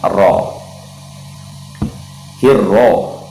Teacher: Hirro, ro ini agak ditekankan sedikit karena ia huruf bertasdid, jadi agak disyiddahkan, ditekan sedikit. Kemudian huruf ra-nya dibaca tebal ya, dibaca tebal, dibaca tafkhim, sebab kaidah huruf ra itu ketika berharokat fathah atau domah itu dibaca tebal.